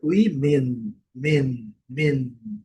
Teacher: E nesse caso eu fiz questão de marcar a letra N, porque o som da letra N é um pouco diferente do português. A gente vai utilizar o som do N. É uma letra assim um pouco prolongada.